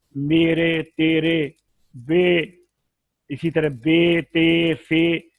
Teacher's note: ये जो आवाजें हैं ना, ये अलिफ और या की आवाज के दरमियान में है, अलिफ मद्दा और या मद्दा की आवाज के दरमियान में, इसीलिए इसको इमाला कहते हैं। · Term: या मजहूला